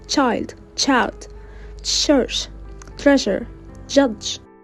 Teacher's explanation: Palatals, produced in where the alveolar ridge meets the palate